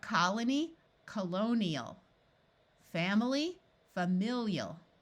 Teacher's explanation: has a long e sound like in Colony in this case the I will keep the sound that the root had which is a long e